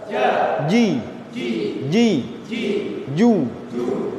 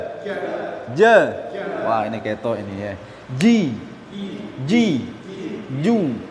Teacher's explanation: tidak ada aliran nafas yang mengalir ketika huruf j diucapkan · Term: huruf Jim